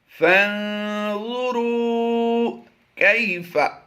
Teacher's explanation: کاف یا زبر کئی یا لین ہے، یہاں پر لمبا نہیں کریں گے